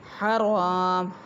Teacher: ہا باریک الف ساکن را کے اوپر زبر الف مدہ ایک الف کے برابر لمبا کریں گے اور را کو پر ادا کیا جائے گا